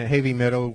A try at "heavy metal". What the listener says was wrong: Heavy metal. There's no H how you said that right now. You just, heavy metal. Heavy. Begins with an E to me. Heavy metal.